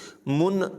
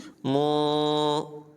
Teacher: نون ساکن کی آواز کو ظاہر نہیں کریں گے، من نہیں پڑھیں گے بلکہ ناک میں آواز لے کر جائیں گے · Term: اخفا